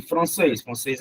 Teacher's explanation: a última sílaba é a mais forte última sílaba país também é oxítona mas aqui país é o